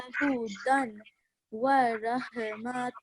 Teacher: This is tanween, yes, but then we have wa with shadda, so we're joining them together. So we're not pronouncing this the tanween sound.